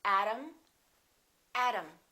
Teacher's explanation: T between two vowels sounds exactly like the D.